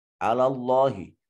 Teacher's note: اس میں جلالت کا ما قبل مفتوح ہے اس لیے اس کو مفخم ادا کریں گے